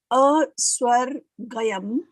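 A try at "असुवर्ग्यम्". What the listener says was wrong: Gyam. Not Gayam. Gyam.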